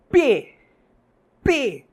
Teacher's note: perceba que nos seus lábios há uma explosão